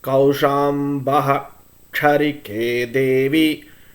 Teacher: There is only one instance where the Visarga sound will retain its original sound h when it occurs in the middle of a sentence, and that is when the succeeding akshara is ch.